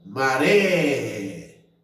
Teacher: Então, o ré é a sílaba tônica, é a última. Então, nesse caso, eu tenho uma palavra oxítona, né?